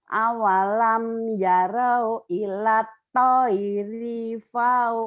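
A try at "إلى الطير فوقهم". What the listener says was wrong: Rinya pendek. Ilat toiri fauqahum. Kecepatan. Cepat-cepat juga nggak boleh. Awalam yarau ilat toiri. Ilat toiri fauqahum. Ilat toiri. Di ilatnya jangan cepat-cepat. Di toirinya aja. Ilat toiri. Rinya pendek.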